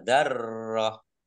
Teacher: tak marbutoh kasroh tanwin ini karena wakof maka dibacanya hak sukun